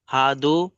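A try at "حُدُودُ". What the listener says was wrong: হাফেজ হু বললেন, হা বলছেন কেন এখন?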